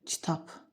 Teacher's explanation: Söz sonundakı B çar qarşılığı kimi tələffüz olunur.